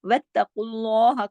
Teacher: کاف بھی موٹا پڑھا جائے گا، لام بھی موٹا پڑھا جائے گا، اور ہا کو باریک پڑھنا ہے. اللہ ہے، یہ ہا کو آگے سے باریک رکھنا ہے اور لمبا نہیں کر دینا.